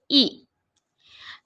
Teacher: حمزہ حلق کے نچلے والے حصے سے ادا ہوتا ہے، حمزہ پر زیر ہے نہیں کھینچیں گے، حمزہ زیر ای۔